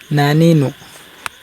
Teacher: গুন্নার নুন নাকের মধ্যে বাজিয়ে পড়বেন